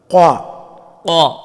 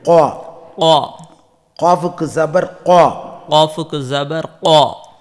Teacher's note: இந்த காஃபானது நாவின் கடைசி பகுதி மேல் முரசில் தொட்டு விலகும்போது உண்டாகும். கா. குரல் வாய் நிரம்ப ஒலிக்க வேண்டும்.